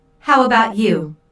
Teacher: notice the intonation Falls here because the speaker is going to follow it up with a detailed question